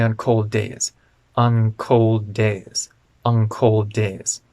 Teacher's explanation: the tongue is further back to get ready for the k sound · days now that word on is de-stressed on cold days and the n and the k in cold link together